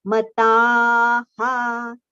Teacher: It should not be mataha. It is mata, ta long, and then the visarga sound ha. Mataha. Okay, sure.